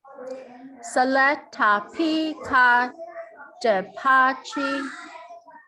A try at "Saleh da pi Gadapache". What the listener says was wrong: So you gotta say this H a little more right here. Saleh da E. E.